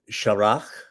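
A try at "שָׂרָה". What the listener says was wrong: No, Sarah, with the sin, Sarah.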